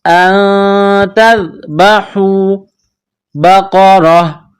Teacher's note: نکلتی ہے، تذبحوا، ان تذبحوا بقرہ، قاف کو موٹا کرنا ہے، را کے اوپر زبر ہے، را کو موٹا کرنا ہے